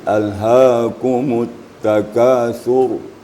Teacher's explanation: Walaupun ra-nya sukun, apabila sebelumnya baris di depan atau baris di atas, maka ra-nya tebal, tafkhim.